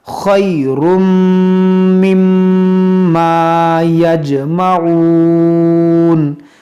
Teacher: اب یہاں تنوین کے بعد میم ہے حروف یرملون تو یہاں پر ہم ادغام کریں گے اور میم مشدد بھی ہے تو یہاں پر غنہ کریں گے